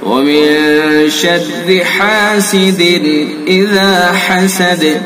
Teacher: حا کو حلق سے ادا کریں گے. حاسد اذا، اس کے اندر اظہار کریں گے.